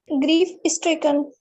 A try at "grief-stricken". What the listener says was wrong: Whenever you say S, is se shuru mat karna. Abki, just say stricken. Not is stricken. Stricken.